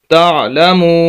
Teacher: یہ واو مدہ ہے جس کو ہم لمبا کر رہے ہیں